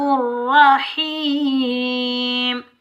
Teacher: را کے اوپر زبر آنے کی وجہ سے را کو ہم پور پڑھیں گے، موٹا پڑھیں گے۔